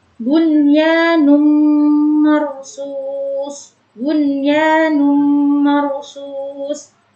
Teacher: cara membacanya yaitu dengan memasukkan dengan mendengung. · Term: idgham bi gunnah